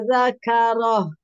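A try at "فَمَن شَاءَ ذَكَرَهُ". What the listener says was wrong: Baik, sya-nya. Sya, kurang sedikit lagi.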